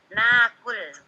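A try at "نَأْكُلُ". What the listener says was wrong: Ingat, nahnu jangan dipanjangin lagi. Kalau ana panjang, kalau nahnu enggak panjang. Nakulu, gitu ya. Kalau nahnu nakulu hamzah sukun. Tidak menjadi panjang, ingat.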